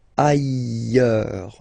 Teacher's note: final S not pronounced, and then you've got this y sound